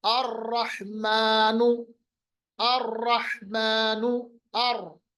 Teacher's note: रॉ को हमने मोटा पढ़ा, पुर पढ़ा। वजह उसकी ये है कि रॉ पे जबर है और रॉ पे तशदीद भी है, पहली कंडीशन।